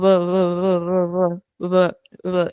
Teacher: pero no se cierran por completo los labios. Entonces te quedas con algo como no, no es igual que ba, porque ahí sí cierras los labios por completo, ¿sabes?